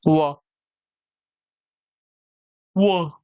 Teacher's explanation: व का उच्चारण स्थान यहाँ पे दंत्योष्ठ दिया गया है